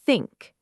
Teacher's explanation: Put your fingers gently on your throat and say think. Notice there's no buzzing, just air. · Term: voiceless th